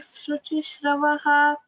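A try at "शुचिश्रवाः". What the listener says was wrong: Shravaha. Shuchishravah. Va Dirga is there.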